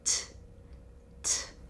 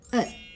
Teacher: she stops herself just before she makes the T sound. When you make the T sound, you push air out of your mouth.